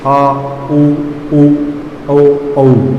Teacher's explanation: अब आगे बात करेंगे पक्ष भाग, जीभ का जो पीछे का हिस्सा होता है, पक्ष भाग। आ, ऊ, औ, औ बोलते समय जीभ का जो पीछे का हिस्सा पक्ष भाग है वो उठता है।